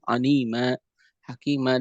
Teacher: ketika tanwin ada di akhir pembacaan, kemudian ketika kita wakaf di dalamnya, maka dibaca dengan 2 harakat. Contoh dalam kalimat anima, hakima, dan lain sebagainya, dia iwadon, dia menjadi pengganti dari tanwin, maka dinamakan dengan mad iwad.